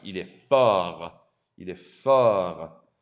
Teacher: Notice again, the T is silent.